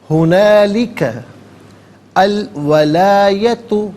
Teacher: ہنالک میں کاف پر زبر ہے، اس سے الولایت کی لام ساکن کے ساتھ ملائیں گے، درمیان میں سے الف یعنی حمزہ کو حذف کیا جائے گا